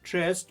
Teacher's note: У слові честь наступний м'який приголосний звук ть ділиться своєю м'якістю з попереднім приголосним с і робить його пом'якшеним. А значить, звук С в слові честь відрізняється від інших звуків, позначених літерою С.